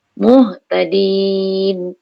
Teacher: Bil ha ni ha besar. Ha di pangkal halkum.